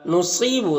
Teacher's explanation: نصیب صاد حروف مستعلیہ میں سے ہے، پر پڑھیں گے اور یہاں پر یا مدہ ہے، ایک الف کے برابر کھینچیں گے۔